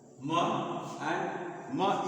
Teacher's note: Ma and ma is bilabial. जैसे प बोलते हैं उसी तरह से म भी बोलते हैं, तो ये बाइलिबियल साउंड होता है